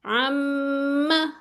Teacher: اس پہ 2 کاؤنٹس غنہ کی آواز آئے گی. ٹھیک ہے، یعنی کہ ناک میں آواز آتی ہے عم. ٹھیک ہے، ماں کو لمبا نہیں کرنا، یہ 1 کاؤنٹ ہی ہے.